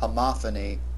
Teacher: accent on the second syllable for the noun form and the accent on the third syllable for the adjectal form.